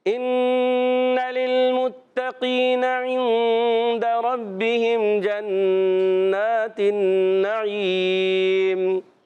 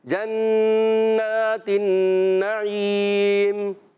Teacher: نون مشدد آ گیا، نون مشدد میں ایک الف کا غنہ ہوگا. اور نعیم جب وقف کریں گے ہو جائے گا مد عارض.